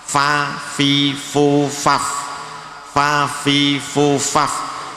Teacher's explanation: fa itu makhrajnya adalah bibir bagian bawah bagian dalam, bibir bawah bagian dalam. Bagian dalam itu artinya kalau dirapatkan tidak kelihatan.